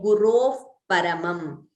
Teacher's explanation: We say Gurov Paramam. So there is an expulsion of air and immediate closure of the lips. That is exactly how Upadhmaniya is pronounced.